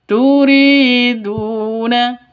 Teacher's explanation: kasrh panjang dua ketukan Mad asli atau Mad Mad thii turiduna DU sama dua ketukan karena ada wau mati